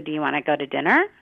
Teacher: And our pitch goes up at the end. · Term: questioning, open-ended tone